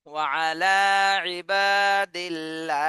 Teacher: আল্লাহ শব্দ চিকুন করে পড়তে হবে